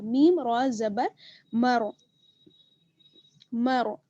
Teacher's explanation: اچھا میم را زبر مر، تو یہاں پر را ساکن ہے اور را ساکن سے پہلے زبر ہے، اس وجہ سے را جو ہے وہ پر پڑھا جائے گا